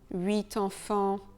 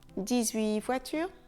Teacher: Le T de 8 sera silencieux, il deviendra muet. avant une consonne.